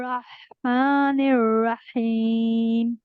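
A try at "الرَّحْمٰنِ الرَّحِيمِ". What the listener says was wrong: रहमानिर रहीम। अच्छा, आप जब माँ कहती हैं, माँ कहना है, माँ, माँ नहीं कहना, नून गुन्ना नहीं डालना इसमें, ठीक है।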